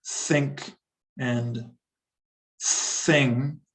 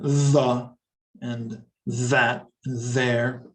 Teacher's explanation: There are actually two different TH sounds. One is unvoiced. You breathe out as in think and thing. And one is voiced. You use your voice box and vibrate down here as in the and that and there. Okay, but either way, you need to stick your tongue out.